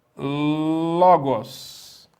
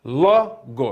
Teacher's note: o logos palavra logos tem o acento agudo na penúltima sílaba que é a sílaba ló de logos